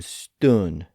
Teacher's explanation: a shorter vowel, usually the uh sound